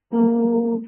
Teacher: Ooh, for the ma circle lips, make it 2 counts long.